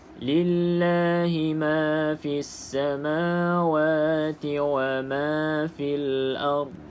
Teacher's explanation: pastikan tidak ada qalqalah sebab dha bukan huruf qalqalah. Jangan ada lantunan.